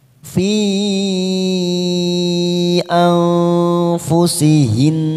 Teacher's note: ada tanda mat bertemu dengan hamzah di lain kalimat namanya mad jaiz munfasil kita panjangkan 5 harokat